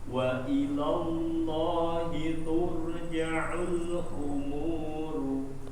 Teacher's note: Ra-nya coba ditebalkan tur.